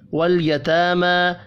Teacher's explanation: تا اور میم کھڑی زبر کی وجہ سے 1 1 الف کے برابر کھینچ کر پڑھے جائیں گے